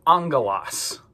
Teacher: But when we see these two letters next to each other, or if gamma is followed by kappa, chi, or Xi, that first gamma we're going to kind of pronounce like a nu sound, an N. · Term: NG sound